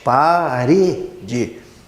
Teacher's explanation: o re, que é a sílaba do meio, no caso a penúltima sílaba, é uma sílaba tônica, é uma sílaba forte.